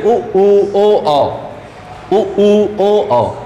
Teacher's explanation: उच्चारण करने पर ओंठों की आकृति वृत्त के समान गोल हो जाती है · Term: वृत्ताकार